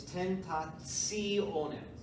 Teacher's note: So the TI in this case is pronounced as a TSI.